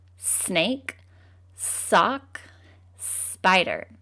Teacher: And because it's a continuous sound, it can keep going. And it's an unvoiced sound because our throats do not vibrate when we make it